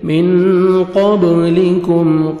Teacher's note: اخفا کریں گے، نون ساکن کے بعد 15 لیٹرز میں سے قاف ہے، نوز میں ساؤنڈ لے کے جائیں گے